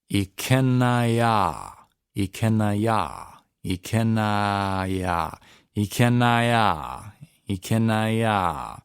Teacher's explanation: there's no okina between them. So what we need to do is run them together.